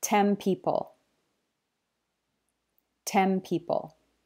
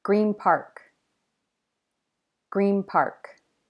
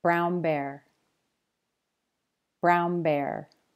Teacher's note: try to pronounce the N as an M sound. So try to make the M sound, or at least notice if your mouth does it naturally.